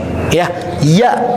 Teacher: lidah itu otomatis akan naik terangkat ketika dibacakan huruf ya, naik ke atas. Tapi tidak sampai menempel